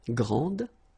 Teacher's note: And regarding the feminine form, you will pronounce it grande. Okay, don't insist on the final E, but then pronounce this D